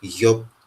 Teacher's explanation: Then we have the palatal form of the R sound, and the first example is yop